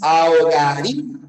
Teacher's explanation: La fuerza de voz la tiene la I. Por lo tanto, esto es un hiato acentual.